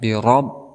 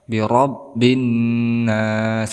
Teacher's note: Kemudian kita bertemu dengan ra dengan berharakat fathah, maka dia hukumi sebagai tafhim, artinya tebal. Bi rabb, tebal.